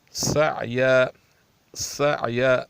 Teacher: سعی، سعی، سین کی جو ہے صفت ہے سخت اور پتلی ہے. اتنی سخت ہے کہ سین کی ادائیگی کے وقت سیٹی سی آواز نکلنی چاہیے، سیٹی جیسی آواز نکلنی چاہیے.